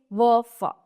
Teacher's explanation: दंतोष्ट या ऊपरी दांत व निचले होठ से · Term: दंतोष्ठ